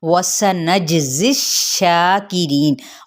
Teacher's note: वाव होंठों की ना तमाम गुलाई के साथ, सीन पे सीटी